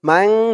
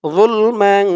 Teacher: মাং বলে গুন্না করতে হবে